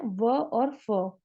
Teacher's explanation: दंत और ओष्ठ से बोले जाते हैं वो है व और फ